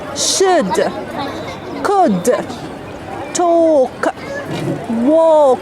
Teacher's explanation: in all these words we don't pronounce l it's a silent letter here like the video thank you for